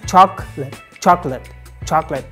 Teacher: chocolate has just two syllables, chalk and lit.